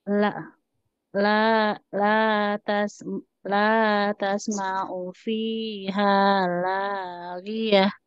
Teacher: Hati-hati ini la-nya panjang, Bu ya, 2 harakat.